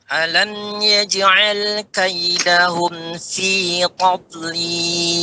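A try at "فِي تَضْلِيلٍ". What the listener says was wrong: Nah, jangan tanya ikut tebal, Pak. Yang itu tebal pada dotnya. Tadlil, ta di ujung lidah, ba di tepi lidah. Ya, yang tebal pada do-nya. Jangan tob, tapi sempurnakan ta-nya.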